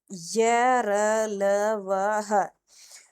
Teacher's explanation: यह सघोष होते हैं। अंतस्थ व्यंजन सभी सघोष होते हैं।